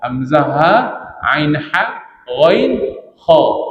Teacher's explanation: Huruf izhar yang enam tu keluar daripada bahagian kerongkong ini. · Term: izhar halqi